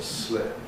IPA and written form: slɪp (slip)